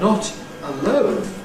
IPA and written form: ˈnɒt əˈləʊn (not alone)